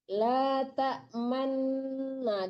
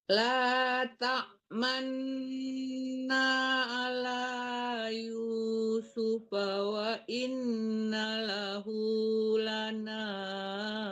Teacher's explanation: Ini di bawah ada tulisan ismam ya Bu. Ismam itu artinya memonyongkan mulut ya. Didengungkan nunnya dulu ya. La ta'manna, dimonyongkan mulutnya.